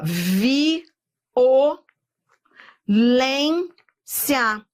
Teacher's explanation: eu tenho um hiato, anote aí, entre o I e o O